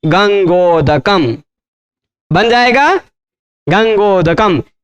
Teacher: क्योंकि आ का उच्चारण स्थान कंठ, उ का ओष्ठ, ओ का कंठोष्ठ